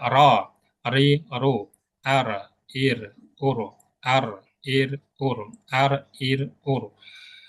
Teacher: menuju satu titik di tengah ke tengah lidah ya kemudian takrir takrir ini bergetarnya ujung lidah